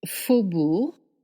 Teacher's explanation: You don't pronounce the G at the end,